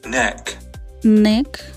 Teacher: Alveolar, the tongue touches the alveolar ridge behind the upper teeth.